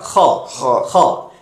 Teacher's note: খর আওয়াজটা একটু খেরখেরে একটা আওয়াজ হবে গলা থেকে